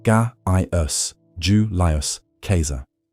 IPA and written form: ˈɡaːi.ʊs ˈjuːliʊs ˈkae̯sar (Gaius Julius Caesar)